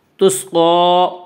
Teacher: قاف کو پر پڑھیں گے، قاف حروف مستعلیہ میں سے ہے